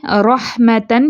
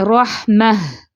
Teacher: वक्फ की सूरत में ये गोल ता हा साकिना में बदल जाएगी